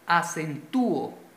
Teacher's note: Mayor fuerza de voz en la U.